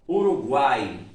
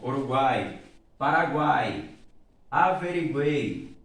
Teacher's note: Tudo, o som sai todo pela cavidade bucal. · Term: tritongos orais